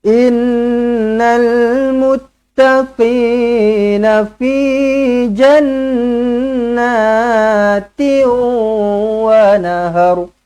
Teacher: Kemudian na-nya kena baca panjang dua harakat. Kenapa? Sebab ada alif kecil kat sini, mad asli.